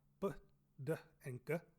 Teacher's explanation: they're going to sound actually like different sounds, but trust me, they're the plain versions of P, T, and K